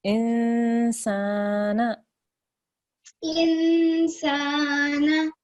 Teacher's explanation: you make the guna sound there, the sound which comes from your nasal pipe